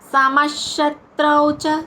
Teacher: సమష్ శివ శంకర తాళవ్య ష అంటాం. సమష్ అక్కడ విసర్గుచ్చారణ ష